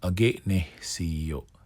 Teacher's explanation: So it's not straight up nes, right? You have that little aspirated H.